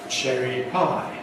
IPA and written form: ˌʧeri ˈpaɪ (cherry pie)